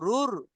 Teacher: এই যে রুর বলার সময় মুখটা গোল হচ্ছে, এটা হলো রাপুর হওয়ার কারণে। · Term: মুখ গোল